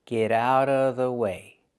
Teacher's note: So the T in get changes to a fast D because it's between vowels. Get out of, outa.